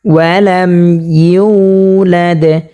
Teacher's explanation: এই মিম সাকিনকে আমরা গুণনা ছাড়া পড়ব।